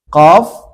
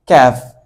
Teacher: কফ ক্যাফ, কফ ক্যাফ। কফটা হবে জিহ্বার গুড়া থেকে উচ্চারণ হবে, আর কাফটা জিহ্বার গুড়া থেকে একটু সামনে অংশ থেকে উচ্চারণ হবে।